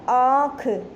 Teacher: जब हम अनुनासिक का या चंद्र बिंदु का जब हम उच्चारण करेंगे तो जो ध्वनि है वो मुंह और नाक दोनों से निकलेगी